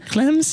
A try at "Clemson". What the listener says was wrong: Even it sounded like a P there. Clemson, like